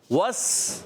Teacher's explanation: ہونٹ گول ہوئے واو پر گول ہوئے، سین پر کھلے